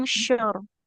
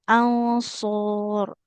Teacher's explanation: Sama huruf shad nggak boleh jadi shin ya, tidak angsyur tapi ansur.